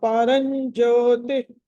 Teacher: ర తర్వాత అనుస్వారం ఉంది, తర్వాత జ ఉంది కాబట్టి చవర్గంలోని పంచమాక్షరం